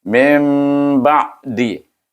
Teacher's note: rapat kita punya bibir, tetapi jaraknya sehelai atas, bunyinya dengan dengung, iaitu dengan hukum iqlab.